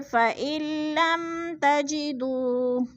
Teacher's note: دو پہ وہ مدہ ہے، وہ مدہ کو ہم نے 1 الف 2 حرکات کے برابر کھینچ کر پڑھنا ہے